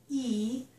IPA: i